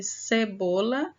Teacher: cebola é uma palavra paroxítona, porque a sílaba tônica está na penúltima sílaba